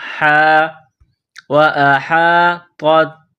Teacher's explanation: ہا گلے کے درمیان سے زور لگا کر ہا کو نکالیں گے